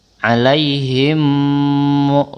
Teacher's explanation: mim sukun bertemu huruf mim dibaca dengung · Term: idgham mimi